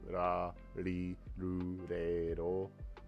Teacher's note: you're rolling your tongue off the top of your mouth to do ra, ri, ru, re, ro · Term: rolling R's